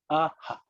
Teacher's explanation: visarga is air which echoes the vowel which it follows. And it is capable of changing shapes depending on what follows.